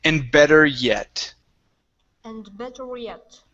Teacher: let's connect the r and the Y just a little bit better